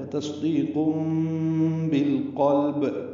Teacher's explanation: بالقلب با کو لام سے ملائیں گے، لام ساکن ہے، اظہار قاف پر، پھر لام ساکن اظہار، پھر با پہ قلقلہ · تنوین کا جو نون ساکن تھا اس کو تبدیل کر کے میم پڑھا گیا ہے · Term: اقلاب